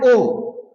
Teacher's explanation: कंठ प्लस ओट ये दोनों उच्चारण स्थानों से केवल ये ओ बोला जाता है